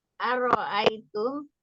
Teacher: ro dibaca tafkim karena sebelumnya fathah